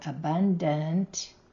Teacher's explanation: The last A in the word abundant has the schwa sound.